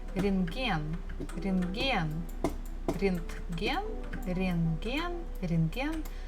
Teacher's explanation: there's a bukva T in the middle of the word, but actually we don't have to pronounce it.